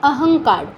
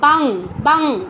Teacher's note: ঙ হসন্ত, ঙ এর অটা উচ্চারণ হচ্ছে না। তারপর বাং, বাং, এখানে ঙ উচ্চারণ হচ্ছে অনুস্বার।